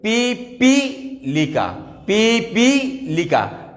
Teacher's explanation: কোথায় টান দিচ্ছি? দীর্ঘই হচ্ছে দ্বিতীয় পির ক্ষেত্রে, তাহলে প্রথম পি রস্বীকার, পি পি লিকা।